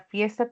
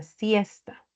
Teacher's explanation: la F, que es una fricativa, es labio dental, y la S, que es otra fricativa.